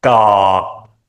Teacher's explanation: because the ending is short, it cannot be middle tone. Here it's low tone.